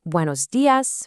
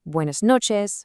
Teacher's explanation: Just listen to how those vowels stay short and crisp in every single phrase.